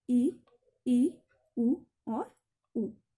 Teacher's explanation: संवृत का मतलब होता है जिसमें हमारा मुख पूरा बंद हो जाता है, पूरा मतलब लगभग पूरा बंद होता है। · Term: संवृत स्वर